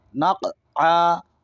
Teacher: قاف حرف قلقلہ ہے، آواز لوٹے گی